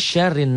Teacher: ro-nya tipis tafkhim karena barisnya di bawah kasroh